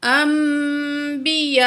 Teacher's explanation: جب نون ساکن کے بعد با آ جائے گی تو نون کی آواز کو ہم میم میں بدل کر پڑھیں گے، ٹھیک ہے۔ تو یہاں پہ اقلاب ہوگا، بدلنا، تو پڑھیں گے آگے، انبیاء، بڑی مد ہے، 5 سیکنڈ کھینچ کے پڑھیں گے۔